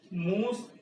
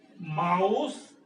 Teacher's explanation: the long back vowel oo became diphthong ow